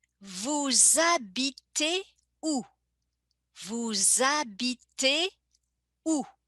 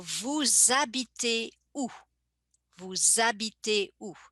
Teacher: And you see in the pronunciation, I make a little connection between vous and habiter. I connect them in the pronunciation as if they were part of the same word. The H being silent. In French, we never pronounce the initial H. And the S becomes like a Z sound.